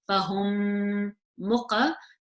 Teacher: You've got a mim sakin here followed by another mim. So this is idgham saghir. I would pronounce it with gunna.